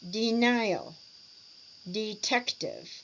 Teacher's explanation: 3-syllable words with the stress in the middle.